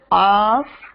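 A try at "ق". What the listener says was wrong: No. Say qaf. Make it heavy.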